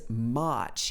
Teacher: He uses this long R sound, which is very particular to British English, and it's one of the sounds that you need to get right if you're learning the British accent.